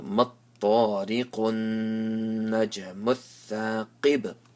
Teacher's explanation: Pronounce the qaf with the full mouth and qalqala on the ba.